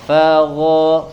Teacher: huruf ghoinnya dari adnal halq ya, dari tenggorokan bagian ujung atau yang paling dekat ke bagian lidah.